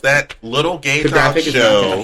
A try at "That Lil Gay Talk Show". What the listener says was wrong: Lil. Not little.